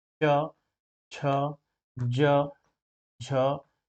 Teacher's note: च की ध्वनि जो है वो कहां से निकलती है वो ताल से निकलती है